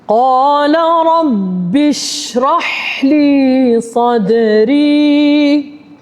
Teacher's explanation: Bila saya sampai huruf shin, saya panjangkan bunyi shin, saya lepaskan suara shin. · pada huruf shin dan juga huruf ha, saya panjangkan suara pada huruf tersebut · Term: huruf syin